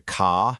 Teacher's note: You've got the famous Boston accent, right? Where car turns into ca